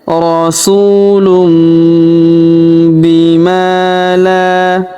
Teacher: huruf ma kita panjangkan dua harakat karena terdapat alif di depannya